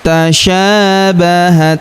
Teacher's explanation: huruf sya kita panjangkan dua harakat karena terdapat alif di depannya